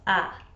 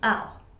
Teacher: the pronoun I in Scotland is often said as a, and then I'll becomes al